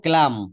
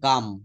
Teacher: এখানে এলটা কিন্তু সাইলেন্ট থাকবে